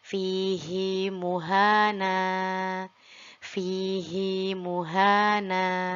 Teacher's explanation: Hi-nya kita baca 2 harokat. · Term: mad mubalaghah